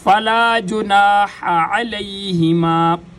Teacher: ہا اور عین دونوں گلے کے درمیان سے ادا ہوتے ہیں